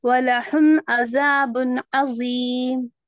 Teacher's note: یہ پہلے یہ ہا نہیں ہوتا، یہ ہا ہے. جی یہ حلق کا نہیں، سینے کا ہا ہے